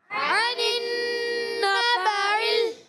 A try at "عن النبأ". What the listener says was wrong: ال نہیں کرنا، یہاں یہ حمزہ ہے، عین شروع میں، یہاں پر حمزہ، بعض بچے بڑے اس کو جو ہے نا عین بنا دیتے ہیں۔ عن النبأ، عن النبأ